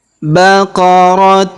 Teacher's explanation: Tanwin un bertemu huruf lam berharakat tasydid maka tanwin unnya menghilang ya. menghilang tidak dibaca.